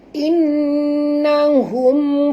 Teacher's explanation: nun bertasydid, wajib dengung, wajib al-gunah